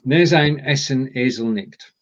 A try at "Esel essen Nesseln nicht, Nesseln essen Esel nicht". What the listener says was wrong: Right, that's an L. Nesseln. Nesseln. Esel essen Nesseln nicht, Nesseln essen Esel nicht.